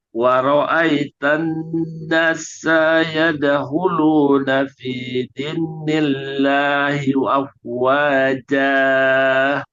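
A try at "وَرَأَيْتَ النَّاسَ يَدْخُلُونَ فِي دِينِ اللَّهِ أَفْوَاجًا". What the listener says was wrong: Jangan double S. Nasa, jangan nasa. dini, jangan din, jangan double N. Dinillah.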